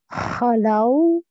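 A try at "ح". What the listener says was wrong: With the ha, it was a bit too throaty. So, hollow, hollow. So, it's got too much ha in it. It's too strong. Hollow, hollow. So, say rain, rain. Rain. And from the same place, say ha.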